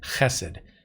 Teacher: note the accent on the first syllable.